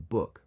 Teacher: Similar to bat, when saying book, bring your lips together to pronounce the B sound. Remember to release a burst of air and let your vocal cords vibrate while saying the B sound in book.